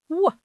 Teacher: But the W sound is bilabial. It uses both lips. Your teeth should never touch your lip for a W. You round your lips like you're going to kiss someone and then you open them.